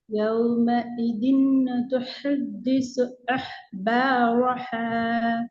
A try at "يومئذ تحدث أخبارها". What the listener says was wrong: ح இல்ல ه. ه. أخبارها.